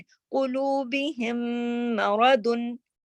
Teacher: क़ुलूबिहिम, ये हिम ये आवाज नाक में चली गई, ये गुन्ना है। और फिर ये इस दोनों आपस में मिल गए, ये इदगाम है।